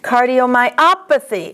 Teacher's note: The accent is on op.